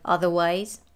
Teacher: in the word otherwise she drops the r and it sounds like otherwise the s links to the th